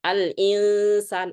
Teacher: yang namanya gunnah ikhfa itu nggak bunyi N sama G